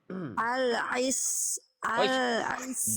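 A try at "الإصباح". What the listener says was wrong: Jangan jadi ain. Ya, bukan timantul, tapi hamzanya karena ingin melafalkan shad, jadi yang fasih jadi ikut hamzah jadi ain. Al-is tidak al-i. Al-isbahi.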